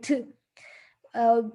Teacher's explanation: difficult for us to say very pure english sound like to there's some air and it's not very much voice